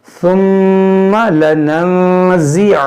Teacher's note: नून साकिन के बाद जा है, तो यहाँ पर इख्फा करेंगे, यहाँ नून में गुन्ना करेंगे